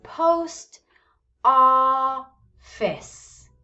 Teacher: it's pretty clear that the first syllable here is higher in pitch